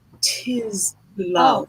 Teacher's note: Can you aspirate that T a little bit more?